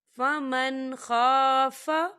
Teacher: فمن خاف، یہاں دیکھیے فمن نون ساکن ہے، نون ساکن کے بعد خا آ رہا ہے، اور خا جو ہے حروف ہلکی کا ورڈ ہے تو یہاں پر اظہار ہوگا، تو ہم اسے بغیر غننے کے پڑھیں گے